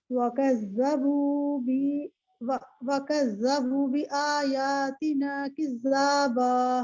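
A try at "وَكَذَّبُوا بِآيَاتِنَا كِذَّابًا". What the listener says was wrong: आप दोबारा इसको पढ़ेंगी, आपने कज़्ज़बू में वाव मद्दा की मिकदार कम कर दी है। वकज़्ज़बू बिआयातिना किज़्ज़ाबा।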